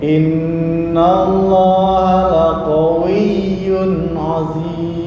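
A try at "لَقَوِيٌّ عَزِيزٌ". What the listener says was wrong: Nah, ini tertahan, kurang lepas. Bukan aziz, itu tertahan. Bukan aziz, tertahan.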